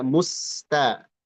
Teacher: Hati-hati dibaca muttaqim tapi hendaklah dibaca musta. Musta sinnya dibaca jelas dan ee jangan jadi shad.